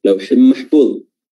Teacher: Lauhim mahfuz yang tadinya adalah lauhin tanwin namun bertemu dengan huruf mim, dileburkan, digabungkan langsung hurufnya menjadi mim saja. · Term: idgham bi gunnah